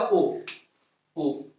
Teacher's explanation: कंठ ओष्ठ से दो बोले जाते हैं, ओ और बड़ा ओ